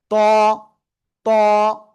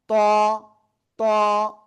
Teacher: জিহ্বার আগা, উপরের দুই দাঁতের গোড়ায় লাগাবো, লাগে একটু মোটা আওয়াজে আমরা এই অক্ষরটা এক আলিফটা নিয়ে উচ্চারণ করব।